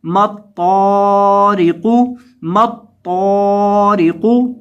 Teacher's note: ता और क़ाफ दोनों को मोटा करेंगे और वक़फ़ की हालत में क़ाफ को साकिन कर देंगे।